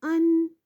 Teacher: زبان کا کنارہ جب ثنایا، ربائی اور انیاب کے مسوڑوں سے لگتا ہے تو نون ادا ہوتا ہے